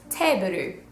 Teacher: They don't really have that sound in the middle, the BLE, the bull sound in Japanese.